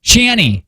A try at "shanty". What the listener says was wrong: Shanny. See, and so there's a T at the end. Because in Michigan, we don't say it.